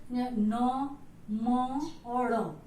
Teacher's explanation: नाक से इसका उच्चारण होता है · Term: नासिक्य व्यंजन